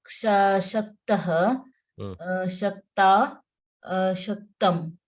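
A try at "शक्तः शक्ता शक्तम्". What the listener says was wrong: Shaktam, very good.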